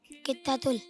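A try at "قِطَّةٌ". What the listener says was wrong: तुल है या तुन है? तुन। कित्ता तुन। कित्ता तुन।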